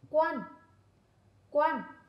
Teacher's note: lưu ý một số tiếng sau tiếng quan chứa vần An có âm cuối n khi đọc đầu lưỡi cong lên